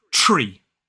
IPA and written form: triː (tree)